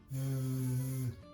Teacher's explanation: And that makes the sound Z. If you place your tongue underneath your front teeth and you try to make a bit of sound, it feels like your tongue is vibrating on your teeth and there's a bit of sound coming out.